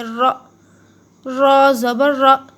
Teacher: را کے اوپر زبر ہے تو را کو موٹا پڑھیے، را، را زبر را، جب بھی را کے اوپر زبر آئے تو را کو موٹا پڑا کریے، را۔